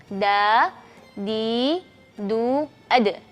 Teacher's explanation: Perhatikan tidak keluar angin ketika melafalkan huruf dal.